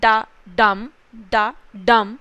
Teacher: it's a metrical foot जहां पर एक अनस्ट्रेस्ड सिलेबल होता है and then it is followed by a stressed syllable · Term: इयाम्ब